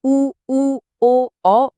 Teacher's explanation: जब हम उ ओ औ बोलते हैं तो होंठ गोल हो जाते हैं।